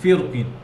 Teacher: এরপরে 7 নম্বর যে পার্থক্যটি, ফিরকিন শব্দটা, ফিরকিন সূরা শুরার 63 নম্বর আয়াত, শাতুবিয়াতে তাফখিম এবং তারকিক দুইভাবেই পড়া যাবে, তাফখিম এবং তারকিক দুইভাবেই পড়া যাবে, কিন্তু রওদাতে শুধু তাফখিম এবং মিসবাতেও তাফখিম, তারকিক করা যাবে না, মানে মোটা করে পড়তে হবে